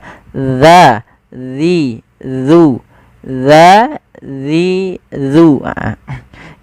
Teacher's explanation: ujung lidah kita menempelkan dengan gigi seri atas kita. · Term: huruf dzal